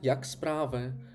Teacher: Висхідна інтонація як справи - це щира зацікавленість.